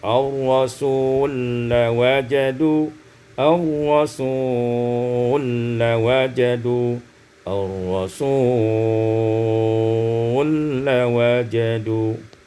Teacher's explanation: Pada ayat yang ke-64, ar-rasulu lawajadu, idghamul lam fil lam, diidghamkan lam pada lam menjadi ar-rasul lawajadu